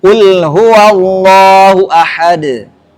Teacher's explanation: Maka harus diqqalqalah. Dalnya bunyikan qalnya harus jelas.